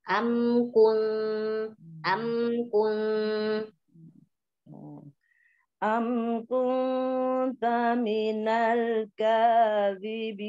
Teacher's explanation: mim ketemu kaf tidak boleh didengung gitu ya. Jadi bacanya jelas.